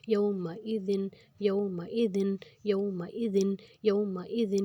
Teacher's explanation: اور ذال جو ہے یہ نرمی والا ہے، اوپر اور نیچے کے دونوں دانتوں میں زبان کی نوک کو لا کے اس کو نرمی سے ادا کرنا ہے، سیٹی نہیں کرنی یہاں پہ۔ یومئذ، یومئذ، یومئذ، یومئذ، یہاں پہ کسی بھی لفظ کو لمبا نہیں کرنا، برابر آئیں گے۔ · واؤ پہ جزم، اس کے پیچھے زبر، تو یہ ہو جائے گا واؤ لین، یہاں پہ ہم نے لمبا نہیں کرنا۔